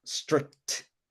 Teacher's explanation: remember it's strick and then you want to add that little T sound with the air coming out